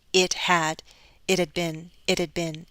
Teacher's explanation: I would flap my T to link